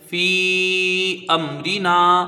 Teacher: یہاں میم ساکن کا قاعدہ اظہار شفوی، یعنی میم کو ظاہر کر کے پڑھا جائے گا، گنہ نہ ہونے پائے